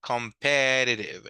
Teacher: Now, this is like a tongue twister, como que si fuera un poquito de trabalenguas ¿verdad? Porque las T de esta palabra no suenan fuerte. Competitive sounds like more like an R sound in Spanish.